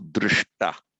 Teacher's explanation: And just in case the grammatically eagle-eyed among you are wondering why the sh has become a sh, it's because whenever you get a root ending in a sh, the palatal sh sound, followed by the ta of the past participle, it always becomes shta. That's why, for example, from the root drish, to see, you get, for example, drishta. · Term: retroflex